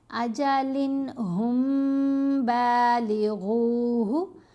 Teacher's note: میم ساکن کے بعد با، تو یہاں اخفا، اخفائے شفوی، میم پر غنہ ہوگا